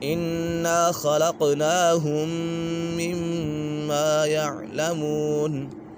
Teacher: یہاں پر میم سکن کے بعد دوسری میم آ گئی ہے تو یہاں پر ادغام شفوی ہوگا یعنی غنہ کر کے پڑھیں گے